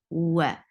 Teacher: The makhraj, the articulation point of wow is circling your lips.